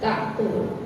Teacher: Qalqalahnya tapi tidak besar kayak kalau kita bacanya posisinya huruf qalqalahnya dalam keadaan sukun. Kalau sukun dia kubro.